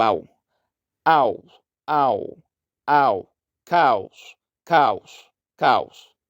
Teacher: o o vai ter o som de u semivogal